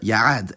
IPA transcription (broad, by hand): jaˈʡad